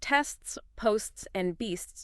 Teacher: You need to articulate the first S, the T, and the final S distinctly. Your tongue does a very subtle rapid movement for that T sound, flicking up briefly between the two S sounds. And there's a slight burst of air emphasis needed for each consonant sound.